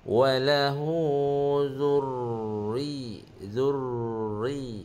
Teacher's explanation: Tidak berlaku takrir, dia hanya an-nabr saja, tekan saja. Bukan jangan getaran tu tidak berlaku pada ra yang bertasydid, dia hanya tekan.